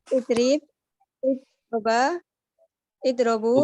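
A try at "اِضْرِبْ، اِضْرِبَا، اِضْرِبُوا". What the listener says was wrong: Bukan idro, bukan idro. Idri tetap, idri dia tetap.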